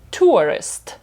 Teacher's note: друга частина дефтонга вона коротенька